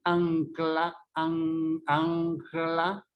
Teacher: Como te dice ancla, tú no dices ancla, sino tira la lengua para adelante para tocar el alveolo como debería ser, porque este fonema es alveolar, sino que este fonema se va hacia atrás y se velariza, igual que los fonemas que le siguen.